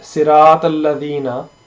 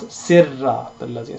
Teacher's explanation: the Se and Ra, they do not join, but you read it as Sirrat al-Ladina.